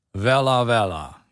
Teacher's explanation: it's written as a w but pronouncing it with a little bit more of a v sound